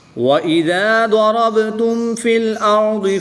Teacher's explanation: ضاد حروف مستعلیہ میں سے ہے تو اس کو پر یعنی موٹا پڑھیں گے، را پر زبر ہے تو اس کو بھی پر پڑھیں گے۔ با حروف قلقلہ میں سے ہے، اور جب حروف قلقلہ ساکن ہوں تو ان میں قلقلہ خوب ظاہر کر کے پڑھیں گے